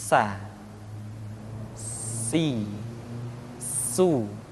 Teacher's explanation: ketika kita mengucapkan huruf sa ada suara tambahan yang menyerupai dengan suara belalang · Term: sifat as-safir